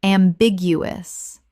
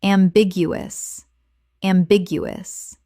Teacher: Four syllables with the stress on the second, meaning open to more than one interpretation.